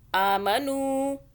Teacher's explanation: نون واو پیش نو کھینچا ہم نے، واو مدہ ہو رہی ہے، دیکھیں واو کے اوپر جزم اور اس سے پہلے پیش آ رہا ہے.